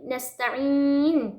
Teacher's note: Ain huruf ain tengah tenggorokan